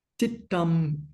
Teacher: Remember, the first word involves a bit of a tongue twister because you've got the dental ta, it starts with dental ta, and the second sound is the doubled retroflex aspirated ta